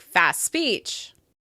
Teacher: We drop the /t/ from fast, and it sounds like fas speech.